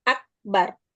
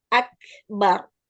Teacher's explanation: ak itu syiddahnya, lalu beri aliran nafasnya.